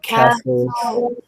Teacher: So the T is silent in this final stable syllable